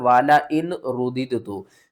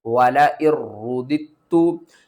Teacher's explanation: را کو بھی ہم نے دو بار پڑھنا ہے، تا کو بھی دو بار پڑھنا ہے، واو کو بھی دو بار پڑھنا ہے۔